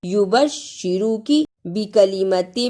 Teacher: یبشرو کی نہیں پڑھنا، شد کی آواز آنی چاہیے، یبشرو کی، شد کو ادا کرنے کا طریقہ، سختی کے ساتھ ذرا رک کر لیکن پڑھتے ہوئے درمیان میں آواز نہ ٹوٹے